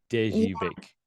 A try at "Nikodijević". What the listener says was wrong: because J, what you call J in Serbian is pronounced Y. Nikodijević.